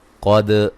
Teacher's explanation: قاف کو موٹا ادا کریں گے، دال پہ قلقلہ ہے